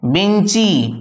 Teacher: বেঞ্চ থেকে বেঞ্চি, এইখানে কিন্তু বাস্তবিকই হস্যই নতুন স্বরধ্বনিটা এসেছে, অর্থাৎ যুক্ত ব্যঞ্জনের শেষেতে স্বরধ্বনি এসেছে। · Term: অন্তঃস্বরাগম